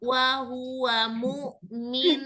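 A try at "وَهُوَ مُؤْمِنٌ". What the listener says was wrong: Belum, stop. Ini jadi nggak ada dengung-dengungnya. Ayo, silakan baca.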